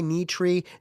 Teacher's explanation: Tongue high, knee, tree, the resonating chamber is small.